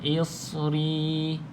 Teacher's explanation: pastikan ri ni panjang dua harakat. Dan ya ni dia tidak ada baris.